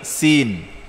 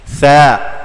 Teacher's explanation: Sa lain, sin lain. Sin dia lidah kita naik ke langit, menyentuh langit, sin. Sa di hujung dekat gusi ataupun gigi. Sa. Ya.